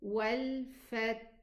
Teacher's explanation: We should take care of the hams in the ta, and the hams also and rakhawa in the letter ha. So we pronounce the hams in the ta first, and then we pronounce the ha with its rakhawa and hams.